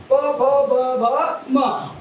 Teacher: भ म काय आहे प फ ब भ म या एकमेकाला ओट खालच्या आणि वरची ओट एकमेकाला भिडतात आणि एकमेकाला भिडल्यानंतर ते वर्ण उच्चारले जातात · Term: ओष्टवर्ण